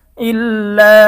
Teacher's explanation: হামজা লাম জের ইল, লাম আলিফ জবর লা, ইল্লা, মধ্যে মুনফাসিল। মদের হরফের পরে পৃথক শব্দে হামজা আসলে মধ্যে মুনফাসিল, তিন আলিফ টানিয়া পড়িতে হয়।